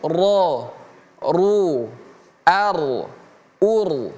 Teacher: Huruf ro itu kalau dia fathah ataupun dommah a ataupun u, maka dia menjadi ro yang tebal.